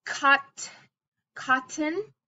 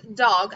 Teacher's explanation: tip of tongue behind top teeth